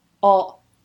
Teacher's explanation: The ts normally at the end are glottalised